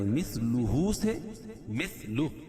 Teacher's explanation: وقف کی صورت میں الٹا پیش کو ہائے ساکنہ سے بدل دیں گے